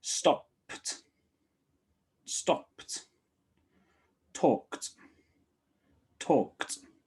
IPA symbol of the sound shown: t